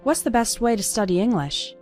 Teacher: And the T at the end of best also kind of disappears.